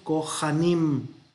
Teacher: Y al ser una aspirada, y aparte de que es sílaba abierta la primera, esta es una aspirada y entonces va a reducirse de un sere a un hatef, hatef patah. Es una A reducida.